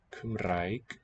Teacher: The R is a trill at the tip of the tongue, like in Italian.